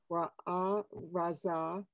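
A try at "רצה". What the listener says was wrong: Ratsa, it's a tsari.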